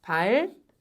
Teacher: 된소리가 납니다. 앞에 리을로 끝났고요. 뒤에 디귿 나서요.